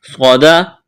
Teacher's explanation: صاد کو موٹا کرنا ہے، سیٹی کی آواز پیدا کرنی ہے